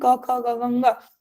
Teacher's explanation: कंठ से ही हम क ख ग घ ङ एक ही जगह से इन अक्षरों को बोल रहे